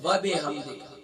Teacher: وب بازر بی ہوگا نہ کہ بازر بے